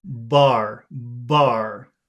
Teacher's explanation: if you say this word BAR, you'll feel your whole head vibrate.